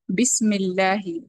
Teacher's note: وہ حمزہ جو ملا کر پڑھتے وقت ڈراپ ہو جاتا ہے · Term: حمزۃ الوصل